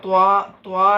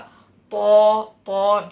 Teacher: Okay, പിന്നെ തോ തോ എന്നുള്ളതിനും ചുണ്ട് ഉപയോഗിക്കാൻ പാടില്ല. ത്വാ അല്ല, തോ ചുണ്ട് ഒട്ടും ഉപയോഗിക്കാതെ. ത, തോ, ത, തോ രണ്ടിനും ചുണ്ട് ഒരേപോലെയാണ്, ഒരു വ്യത്യാസവും ഇല്ല.